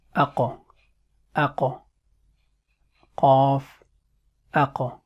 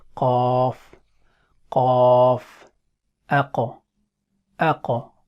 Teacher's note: It is one of the heavy letters, because when we are pronouncing it, then our mouth or lips doesn't remain in the state of flatness or as if we are going to start smiling.